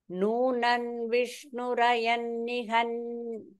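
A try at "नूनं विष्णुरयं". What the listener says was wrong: அது நூனன் இல்ல நூனவ் இல்ல அனுஸ்வரா இல்லனா நூனம்னு வரும்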